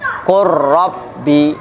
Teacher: Nah, ini buktinya ada yang idgham. Lam fi'il dengan diidghamkan. Qur rabbi bertemunya dengan ra. Qur rabbi, bukan qul rabbi, qul rabbi, qur rabbi.